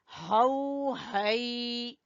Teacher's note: हाउ हा गले के आखिरी हिस्से से